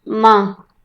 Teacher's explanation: माँ को शुद्ध नहीं माना जा सकेगा, क्यों, क्योंकि इसमें नासिका का भी प्रयोग है